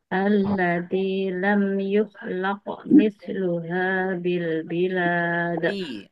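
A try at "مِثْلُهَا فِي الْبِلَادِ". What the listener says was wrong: Ulangi, fi-nya harus jelas. Mithluha fil bilad. Yang pertama fi, yang kedua bi.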